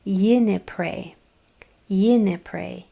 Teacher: my mouth is open in the middle, so it's going to be an N, like Nancy, not an M